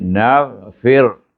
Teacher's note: Nafa bawah fi, ra baca mati, kemudian baca dengan nipis, bunyi naghfir